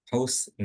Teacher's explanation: Jadi, seakan-akan bukan tanwin ya, husna. Jadi bukan husnan, tapi husna gitu aja. Tapi panjang dua harakat.